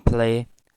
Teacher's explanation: in play, this L becomes voiceless